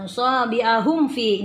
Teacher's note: ini mim sukun dengan fa, tidak ada gunnah atau tidak boleh didengungkan, jadi langsung dibaca. Fi, ingat ini ada 4 atau 5 harakat.